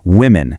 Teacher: The singular is woman, but the plural shifts the sound so the O actually sounds like an I